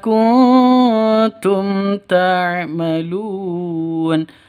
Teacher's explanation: mim mati bertemu dengan ta jelas terang karena Izhar Syafawi · nun mati bertemu dengan tak, samar didengungkan, siap-siap ke huruf taknya karena ikhfa hakiki.